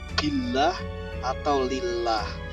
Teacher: Kalau diawali dengan harokat kasroh nama Allah ini, maka dibaca tipis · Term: tarqiq